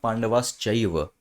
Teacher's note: संधि के नियम का अ जो मैंने आपको बात बताई कि विसर्ग के बाद अगर च छ श है तो वो सा की जगह शा बन जाएंगे